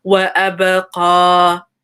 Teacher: خير وأبقى. And there's a ba with a sukoon, which is qalqala. So give it that bounce.